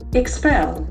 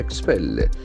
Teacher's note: The accent falls on second syllable. Expel. You force someone to leave an organization.